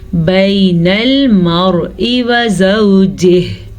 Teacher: را ساکن ہے اور اس سے پہلے حرف پہ زبر ہے تو را ساکن کو ہم پر پڑھیں گے